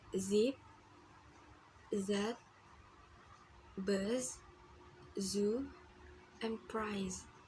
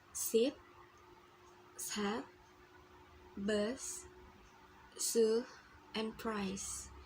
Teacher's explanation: It is a short sound. And the z is voiced sound. The vocal cords move to make this sound. It is a little bit longer than the s sound.